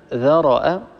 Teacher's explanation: الراء هنا مفتوحة، بالتالي هذه الراء مفخمة